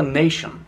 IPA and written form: ˈneɪʃən (Nation)